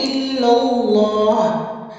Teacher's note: الا اللہ میں آپ نے لام تشدید پہ رکنا نہیں ہے، یعنی کہ الا اللہ نہیں کرنا، آپ نے الا اللہ فوراً سے پڑھتے ہوئے لام جلالہ کو آپ نے موٹا ادا کرنا ہے